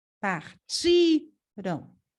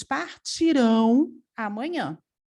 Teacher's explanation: Sílaba tônica é ti. Partiram. Agora, partirão é uma palavra oxítona. A sílaba tônica é rão.